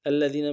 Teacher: الذین میں حمزہ کو لام کے ساتھ ملانا ہے، لام کے اوپر تشدید ہے، زور دیں گے، اگلے لام کو لم سے ادا کریں گے۔